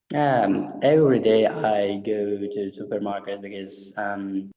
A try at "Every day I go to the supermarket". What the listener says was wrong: Stress timing's a bit of every day I go to the supermarket. Every day I go to the supermarket. Stress, yeah, the sentence stress isn't quite there. Some problems with the th sound, like the th and the, they come out as like tink or things like this.